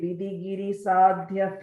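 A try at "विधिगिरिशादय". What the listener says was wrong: Sorry, again, அந்த இடத்துல I think you're saying third line la, you're saying Vidigiri Shadya, you're saying id, but it's a the Vidigiri Shadaya.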